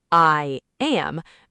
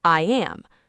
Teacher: Do you feel how your lips are stretched wide almost like you are smiling? Now when you drop your jaw to say the word am, your tongue drops down and accidentally creates a Y sound. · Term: invisible Y sound